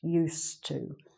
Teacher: it's spelt with the d but it's not really pronounced